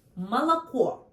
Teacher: This vowel, when unstressed, sounds like A. When stressed, of course, sound like O.